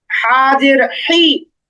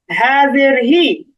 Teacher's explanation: প্রথমে যে বড় হাটা আছে সেটার উচ্চারণ গলার মাঝখানে নিতে হবে